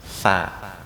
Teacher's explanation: Punggung ujung lidah dengan gigi seri atas.